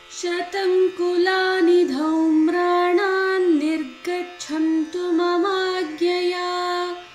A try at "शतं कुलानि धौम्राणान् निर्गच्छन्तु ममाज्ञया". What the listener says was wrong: Yeah, second time you said Agnya. First time you said Agya.